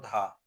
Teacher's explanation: धा जो है दंत महाप्राण घोष व्यंजन वर्ण है।